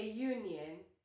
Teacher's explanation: Yes, U is a vowel letter, but it sounds like yo, which is a consonant sound. So remember, it's not about the first letter, it's about the first sound.